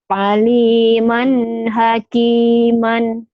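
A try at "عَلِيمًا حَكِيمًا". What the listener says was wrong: mannya jangan ditahan. Aliman hakiman. Idhar ya.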